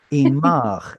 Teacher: This should have been imcha, but pausal moves the stress back one, which brings back your original vowel ah. And now this kamatz is unstressed, so it drops to shva.